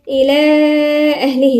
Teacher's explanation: لأن حرف المد جه في كلمة والهمزة في كلمة أخرى، فسمي مد منفصل يمد 4 حركات